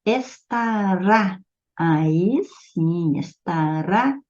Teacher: estará é uma oxítona, a última sílaba é tônica